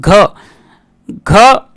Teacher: व्यंजन के उच्चारण में जीहा तालू से नहीं टकराती तो घ घ के उच्चारण में जीवा तालू से नहीं टकराती